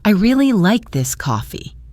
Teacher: If I want to emphasize how much I like it, I'll stress really.